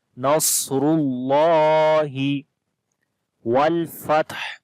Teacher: واو کو لام کے ساتھ ملائیں گے